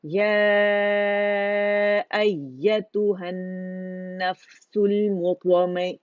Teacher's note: ہم نے لازمی اس کو 4 یا 5 کاؤنٹس کھینچنے ہیں مد منفصل کو. ٹھیک ہے، اس کو ہم کم نہیں کر سکتے.